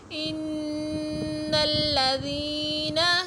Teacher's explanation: نون مشدد ہے تو غنہ کریں گے